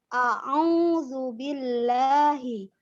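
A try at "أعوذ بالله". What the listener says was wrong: Ainnya kurang kelihatan. Huruf hamzanya nggak boleh condong ke ain, harus sendiri. A'udzu, a'udzu.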